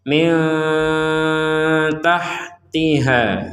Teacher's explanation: Nun mati bertemu ta, kita membacanya dengan samar.